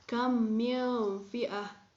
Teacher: Nah, pada contoh-contoh tersebut, huruf mim mati bertemu dengan huruf mim. Jadi, huruf mim mati tersebut dibaca seperti ditasydidkan. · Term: idgham mimi